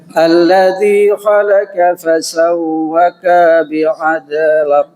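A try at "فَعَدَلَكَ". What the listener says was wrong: Kapnya ketinggalan Pak Haji. Fa'adalik.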